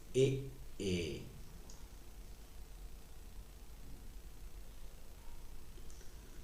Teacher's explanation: तो दोस्तों ये जो ए का उच्चारण होता है हमारा कंठ प्लस तालव्य से, यानी कि जब हम वर्णों को बोलते हैं तो जिह्वा के द्वारा जो ध्वनि आती है, कंठ व तालव्य दोनों को ध्वनि स्पर्श करती है।